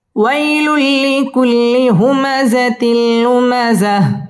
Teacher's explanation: হুমাযাতিল তানবিনের বামে লাম ইদগামে বেলা গুন্না, গুন্না ছাড়া মিলিয়ে পড়তে হবে